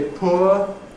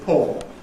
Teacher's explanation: So my better view is that this is better put among the Mid 20th century changes: the 'Loss of / ʊə /'. What used to be ‘poor’ [ pʊə ] is increasingly [ pɔː ].